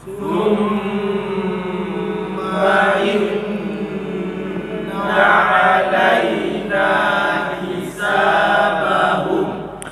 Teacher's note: Cuma kalau dibandingkan dengan nun dan mim tasydid, mim dan nun lebih kokoh pada makhrajnya, bukan pada hidungnya